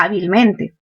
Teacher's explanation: tenemos el acento en a pero también en mente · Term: dos acentos